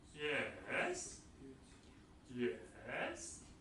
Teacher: fall rise, falls first and then rises